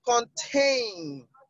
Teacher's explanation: the only one with the different stress pattern is contain, because the stress marker is on the second syllable.